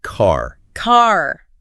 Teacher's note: Americans tend to pronounce R's very clearly, especially at the end of words.